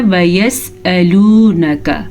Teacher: अच्छा, इस चीज़ का आपने ख्याल रखना है कि हमज़ा को हमज़ा ही पढ़े, ना कि आइन